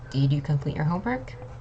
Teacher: For yes or no questions, like did you complete your homework? It's a rising kind of tone.